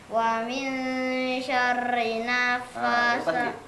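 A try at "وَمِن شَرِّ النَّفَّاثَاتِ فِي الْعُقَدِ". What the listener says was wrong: Gunanya panjang kan? Wa min syarrin naffatsati fil 'uqad.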